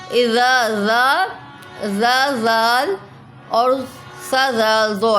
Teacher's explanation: جب زبان ہماری اوپر دانتوں پہ لگے گی تو سا ذال ہمارا ادا ہوگا